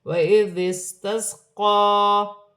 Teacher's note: قاف پر کھڑی زبر ہے، موٹے حروف میں سے ہے، ایک الف کی مقدار کھینچ کر بھی پڑھا جائے گا